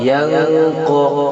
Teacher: نون کی آواز کو ناک میں چھپا کر پڑھیں گے تو یہاں اخفا ہوگا، اس لیے ہم یہاں نون کی آواز کو ناک میں چھپا کر پڑھ رہے ہیں.